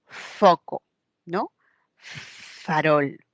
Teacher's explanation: interviene labio y diente por ejemplo cuando decimos foco no farol esa F es la única la labio dental